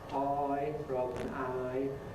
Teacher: Estuary English perhaps [prɑɪs], [ɑɪ] rather than [aɪ] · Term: diphthong shifts